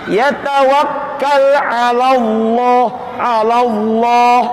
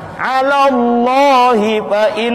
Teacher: Lafal Allahnya dibaca tafkhim atau tebal. Sebab sebelum lafal Allah ada fathah.